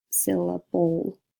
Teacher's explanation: So the E is actually silent, and the L is pulling in the schwa sound before it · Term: syllabic L